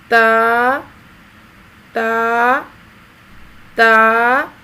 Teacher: ہونٹ پھیلے ہوئے ہوں، گول نہیں کرنے ورنہ لفظ پور ہو جائے گا۔